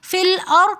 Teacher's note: رو ساکن اس سے پہلے زبر ہونے کی وجہ سے فی الأرض کے اندر ہم رو کو موٹا پڑھیں گے تکرار کے ساتھ